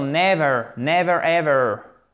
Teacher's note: Ne jamais se tromper pour la place de l'accent tonique. C'est toujours ici pour never sur la première syllabe.